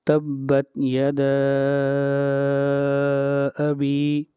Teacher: مد منفصل کو 3 الف کے برابر لمبا کرتے ہیں